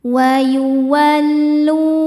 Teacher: Cara bacanya huruf lam panjang 2 harokat. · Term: mad tabi'i